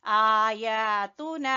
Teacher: ता को छोटा पढ़ना है बाकी तीनों हरफों को खींचेंगे